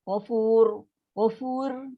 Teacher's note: So ra tu ra tafkhim tebal. Maksudnya kita punya lidah tu melengkung.